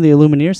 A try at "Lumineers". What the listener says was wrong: Did you say the Illumineers or Lumineers? It sounded like he said Illumineers.